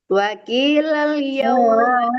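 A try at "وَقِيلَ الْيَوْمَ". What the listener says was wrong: Tebalkan qafnya.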